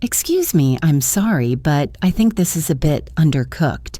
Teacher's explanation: It shows you're not angry, you just want to fix the problem. The linking happens on this is a bit